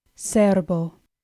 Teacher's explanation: Our first word, cerbo, has the stress on the first syllable.